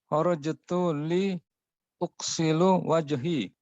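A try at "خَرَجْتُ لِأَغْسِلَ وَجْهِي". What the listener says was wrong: Bukan u tapi a. Ghasala yaghsilu, fa'ala yaf'ilu. Ingat Fasikin, kita minta kharajtu li. Nah, kalau li ini kalau masuk pada fi'il mudhari', fi'il mudhari' jadi apa? Aksila. Jangan dilupakan. Naam, kharajtu li agsila wajhi.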